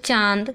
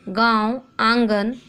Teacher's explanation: अनुनासिक इन का उच्चारण नाक और गले दोनों से होता है